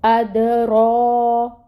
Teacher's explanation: actually رو کو ہم نے الف ماد کرنی ہے رو پہ، تو رو پہ جو ہے وہ مد صغیرہ ہے، اس کو 2 کاؤنٹس کے برابر لمبا کریں گے